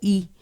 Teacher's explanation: no va a ser como i e sino va a ser como I Y esa I la vamos a alargar perdón de alguna manera como si estuviéramos pronunciando también la e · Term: diptongo i e